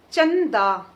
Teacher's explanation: च के बाद आधे न का उच्चारण आ रहा है। आधा न नासिक्य ध्वनि तो यहां पर आप च के ऊपर बिंदु लगाएंगे। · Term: अनुस्वार